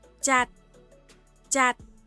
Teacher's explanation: có phụ âm cuối là /t/ nên nó sẽ được đọc bằng tone đi xuống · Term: thanh điệu đi xuống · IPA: /jat/